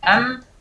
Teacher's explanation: Pada saat kita katakan am itu secara otomatis sudah ada bagian gunnahnya sudah ada.